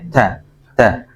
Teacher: Kalau ta itu sifatnya ada nafas yang mengalir sedikit ya, ta.